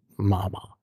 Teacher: wenn der Mund zu ist, muss die Luft irgendwo hin. Und da senkt sich dann reflexartig das Zäpfchen, das Velum. Und die Luft kann durch die Nase stürmen, deshalb Mama.